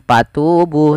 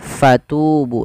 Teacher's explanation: fa alirkan nafas, karena fa punya sifat huruf hamas, yaitu harus mengalirnya nafas. Jangan dibaca dengan patubu, tapi fatubu dengan f.